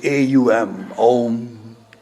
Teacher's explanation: A and U combine to form the diphthong called Om. So that's how the word Om comes.